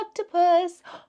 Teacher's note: I heard the ah sound at the beginning, and I know that's the sound that goes with the short O.